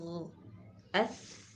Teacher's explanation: اذ، اغ، اث، اح، او، اث میں دیکھیے ہم نے پڑھا تھا کہ یہ صفت ہمس بھی اس میں پائی جاتی ہے، تو دیکھیے یہ بھی پڑھا کہ یہ وہ حرف ہے جس میں ہمس زیادہ ہے، بہت زیادہ ہے، تو اس میں آواز بہت کم محسوس ہو رہی ہے، ٹھیک ہے، اس میں سانس زیادہ ہے، آواز بہت کم ہے، لیکن اس کم ہونے کا اعتبار ضرور ہوتا ہے، یہ نہیں کہا جاتا کہ بھئی یہ صفت ہے ہی نہیں سا میں، لہٰذا ہوگی لیکن بہت کم ہوگی۔